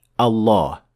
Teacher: the two lams now are assimilated into one full mouth lam